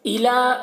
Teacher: لام میں کھڑا زبر ہے، ایک الف کے برابر کھینچ کر پڑھیں گے اور یا کو نہیں پڑھا جائے گا